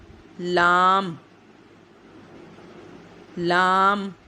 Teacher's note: زبان کی کروٹ کے آخر سے نوک تک کا حصہ جب اوپر دانتوں کے مسوڑوں سے لگے اس سے لام ادا ہوتا ہے